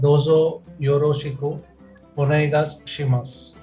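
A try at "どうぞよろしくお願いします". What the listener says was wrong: Dozo is long. Can you say dozo?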